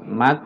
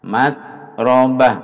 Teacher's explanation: ada bunyi hamas ya, ada bunyi, ada angin yang mendesis keluar sedikit